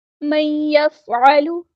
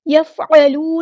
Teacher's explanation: لام کے پیش کو لمبا نہیں پڑھنا